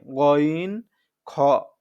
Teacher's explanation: কণ্ঠনালীর শেষ হইতে উচ্চারিত হয় গইন খ এটা হচ্ছে মোটা করে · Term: তিন নং